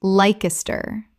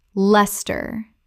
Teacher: Two syllables only. The ice disappears entirely.